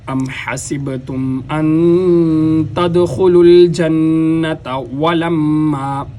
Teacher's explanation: واو کے اوپر ہونٹوں کو گول کیا جائے گا، جیسے کسی پائپ وغیرہ میں پھونک مارنے کی شکل میں ہونٹوں گول ہوتے ہیں۔